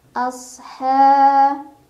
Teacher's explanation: Sad punya ciri khas namanya sifat sofir, jadi ada desisan ya.